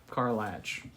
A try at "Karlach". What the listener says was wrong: No, you're saying it like car latch, like a car has a latch. No, it's Karlach. it's Karlach.